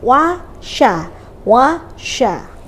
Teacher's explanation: sya itu sifatnya rokhowah artinya apa banyak hembusan · wawu huruf tipis, shinnya huruf tebal. Jadi jangan sampai wawunya yang tipis tadi ikut kita baca tebal.